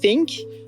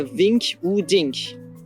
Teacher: think qui prendra une prononciation non voisée Fink plutôt qu'une prononciation voisée comme Vink ou Dink